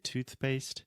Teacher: You know, we kind of cheat a little bit when we have a very fast turnaround. So we have to say tooth, my tongue is out of my mouth, and then immediately we have to make the P sound and say paste. So we say toothpaste.